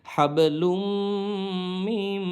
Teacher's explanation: মিমে গুণা করবো, পরের মিমও গুণা করবো